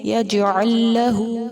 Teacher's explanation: یجعل میں جیم بھی حروف قلقلہ میں سے ہے، اس کو ہلا کر ادا کریں گے، یجعل نہیں، یجعل لہ، لام ساکن کو لام مشدد کے ساتھ ملا کر پڑھیں گے، یجعل لہ۔ لہو پر الٹا پیش ہے، اس کو سنگل پیش سے تھوڑا لمبا کر کے ادا کریں گے